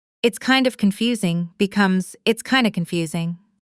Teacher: Kind of often reduces to kinda in casual speech.